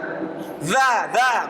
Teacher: Ulya min tarafaihima bertemu dengan ujung lidah ya, ujung lidah ini bertemu dengan gigi seri atas. Sifatnya masih jahar. Ya, jahar itu tidak keluar udara ya. Enggak boleh dibaca za. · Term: huruf zal